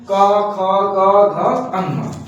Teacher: इन ये पांचों को उच्चारण करते समय हमारा कंठ से कंठ का प्रयोग करते हैं। स्पर्श व्यंजन के क वर्ग में जितने आते हैं उनको उच्चारण करने के लिए हम कंठ का प्रयोग करते हैं